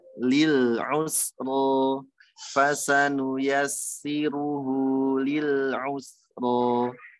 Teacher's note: Ro-nya 2 harokat, tebalkan.